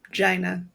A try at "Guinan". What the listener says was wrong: Yeah, you said Gyna. Gynin. There's an N at the end.